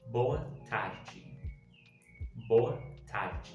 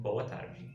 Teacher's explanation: It kind of disappears. It's not a full R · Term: the R sound